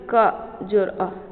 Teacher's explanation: जब हम क उच्चारण करेंगे तो क के साथ ध्वनि अ का भी आएगा।